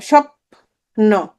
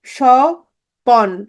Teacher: Banglish কি জানো, স্বপ্ন, স্বপ্ন, দেখো স্বপ্ন, এটা হয়ে যাবে কি স্বপন। এই প এর পর একটা কি চলে আসবে, অধ্বনি আসবে, স্বপন। এই দেখো এই অধ্বনি আসছে। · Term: মধ্য স্বরাগম